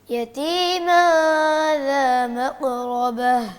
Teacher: قاف کو آپ گلے سے نکالتے ہیں بیٹا, گلے سے نہیں نکالیں